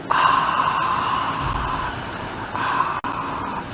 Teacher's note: we can do a whispered ah